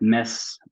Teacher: In a word like mess, we get the middle variant of short E